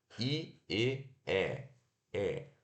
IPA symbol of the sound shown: ɛ